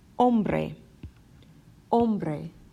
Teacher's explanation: Once again, that H is silent. We go right to the O.